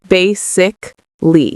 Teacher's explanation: Bay is the first part, and that's where the stress is. So we say bay, louder and longer.